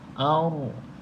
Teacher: ra mati sebelumnya berbaris di atas, ra tafkhim kita baca dengan tebal.